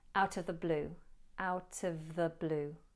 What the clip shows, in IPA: ˈaʊtə ðə bluː